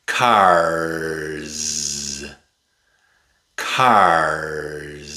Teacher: The R makes the /ɹ/ sound. /ɹ/. That's a voiced sound. So the S is voiced too.